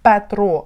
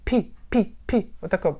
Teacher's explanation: звук П в англійській мові не такий, як у нас Петро, а там Пітер. Пі, піта з придиханням.